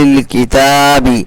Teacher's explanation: تا کھڑا زبر تا تھوڑا سا کھینچ کر کے پڑھیں گے، کیونکہ کھڑا زبر کو کھینچ کر کے پڑھنا چاہیے.